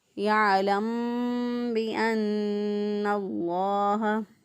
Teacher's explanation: میم کی آواز کو چھپا کر با کو ادا کر دیں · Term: اخفاء شفوی